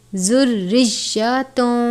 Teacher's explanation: را کے نیچے زیر ہے، را کو باریک پڑھتے ہیں